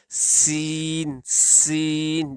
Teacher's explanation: اگلا حرف سین ہے، اس کا بھی یہی مخرج ہے، مثلا آپ کے جب دونوں دانت مل جائیں تو اس وقت یہ حرف ادا ہوگا، اور اس کی بھی آواز مثل سیٹی یعنی سیٹی کی طرح آواز آئے گی، سین سین، جیسے ہم سیٹی کی آواز جو ہے نا وہ نکالتے ہیں، اس کی بھی آواز سیٹی کے مثل ہی آئے گی، سین۔